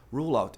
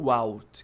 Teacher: Quem não pronuncia o L acaba falando ru